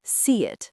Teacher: A tiny y sound is often inserted.